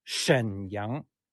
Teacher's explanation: Shen is in the third tone instead of a Shen Shen it's Shen the third tone or